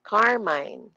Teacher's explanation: Stressed yung car, yung mine hindi.